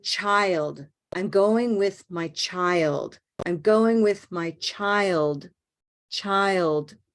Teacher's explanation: there's a very small ending at the end that's like almost like a small released D or t it doesn't matter you don't need to to voice it child